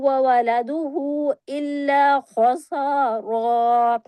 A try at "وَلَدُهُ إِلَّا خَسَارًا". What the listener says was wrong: مد پوری کریں وعدہ کی.